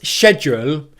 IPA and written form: ˈʃedʒ.uːl (schedule)